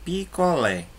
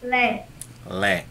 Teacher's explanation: Logo, Lé é chamada de sílaba tônica, enquanto o pi e o có não são tônicas